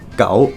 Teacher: Second tone, same as the Chinese one, goes from a low pitch to a high pitch